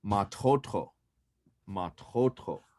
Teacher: pronounced the stress or the emphasis as on the second syllable when you talk about your own hair you're going to put ma in there and the stress still is on the second syllable